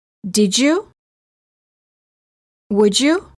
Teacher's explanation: D plus Y is usually pronounced as j, as in joke.